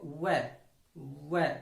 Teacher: वै का उच्चारण स्थान दंतोष्ठ होता है। दांत प्लस ओष्ठ। देखो वै दांत भी पास आते हैं, ओष्ठ की आकृति भी थोड़ी सी गोल होती है।